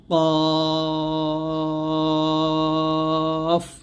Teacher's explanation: জিহ্বার গোড়া তার বরাবর উপরে তালুর সঙ্গে লাগিয়ে এই কফ উচ্চারণ করতে হবে মোটা করে,